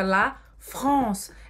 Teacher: esse AN em francês é mais grave do que a gente tem em português